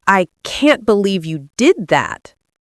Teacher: Notice how can't and believe are stressed. You did that is lighter and your voice naturally rises on that.